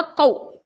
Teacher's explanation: واو ساکن سے پہلے زبر واو لین، اس کو ہم نرم آواز کے ساتھ جلدی ادا کریں گے، کاف و زبر کو۔ · دونوں ہونٹوں کو گول کرنے اور نہ ملانے سے واو ادا ہوتا ہے